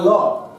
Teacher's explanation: পার্শ্বিক ব্যঞ্জন কোনটা না ল। ল উচ্চারণের সময় কি হয় না জিহ্বার দুপাশ দিয়ে শ্বাসবায়ু বেরিয়ে আসে, তাই ল কে আমরা বলছি পার্শ্বিক ব্যঞ্জন।